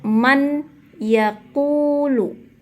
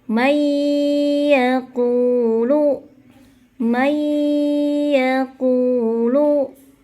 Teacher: Namun nun mati bertemu dengan huruf ya, hukumnya adalah idgham bi gunnah, dengan arti idgham memasukkan nun tersebut ke dalam ya. Tidak dijelaskan nunnya, seperti hilang. Kemudian kita dengungkan selama 2 ketukan. Maka bukan dibaca dengan man yaqulu, tetapi leburkan, masukkan nunnya ke ya, may yaqulu.